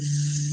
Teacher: And here, in terms of voicing, it's also not just the place of articulation, but also the manner. When I say v, so the air stream goes through the vocal cords, and the vocal cords are vibrating. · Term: voiced sound